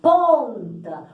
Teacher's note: Tampa, tanto que a gente vai ter 5 letras e 4 fonemas, porque o M só vai transcrever, né, fazer o tiozinho no A. Ponta, o N só vai servir para nasalar a vogal O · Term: dígrafo vocálico